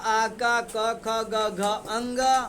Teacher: आज जिस वर्ण का उच्चारण कंठ से होता है ना, उसका नाम कंठ वर्ण होता है।